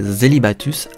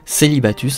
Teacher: M tenu et que le mot kelbatus ce serait plus largement prononcé zelibatus avec un S doux pour ensuite devenir dès le 14e siècle dans le français moderne célibatus avec un S dur